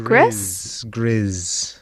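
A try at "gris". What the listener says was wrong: I don't think you pronounce the s then.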